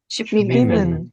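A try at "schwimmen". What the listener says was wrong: 슈비맨이 아니고 슈비. 이게 한 음절이 되야 됩니다.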